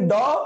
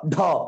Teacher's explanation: একটা অল্পপ্রাণ একটা মহাপ্রাণ দুইটাই ঘোষ বর্ণ কিন্তু একটা অল্পপ্রাণ একটা হচ্ছে মহাপ্রাণ